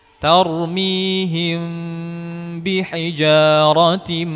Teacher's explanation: mengikhfakkan mim dan memanjangkan gunahnya di sini kita merapatkan bibir ya tidak direnggangkan ada sebagian membacaarm direnggangkan sedikit ini adalah pendapat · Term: Ikhfa Syafawi